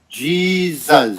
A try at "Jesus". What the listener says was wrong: No, Jesus. Zuz. No, Zuz. You gotta get that S on the end.